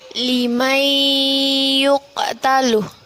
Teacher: nun sukun bertemu dengan Ya hukum bacaannya Idgham Bighunnah cara membacanya dengan memasukkan bacaan nun mati ke dalam ya menjadi bertasydid